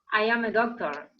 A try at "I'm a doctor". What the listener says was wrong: Mejor si logran el I'm a doctor. Eso sería como lo ideal. Pero para hacerlo más fluido, I'm a doctor. Como si fuese, ¡pum!, así con un solo golpe.